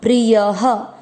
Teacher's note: य में अ मिक्स करेंगे। प्रिय, य में अ की मात्रा से विसर्ग को पढ़ेंगे ह